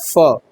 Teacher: ओष्ठ है। फ बोलिएगा तो ओष्ठ के ओष्ठ के सहारे ही फ बोला जाता है